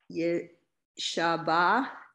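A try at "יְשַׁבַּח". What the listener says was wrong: Yeshabach. Well, I don't know, it sounded more like an H than a ch.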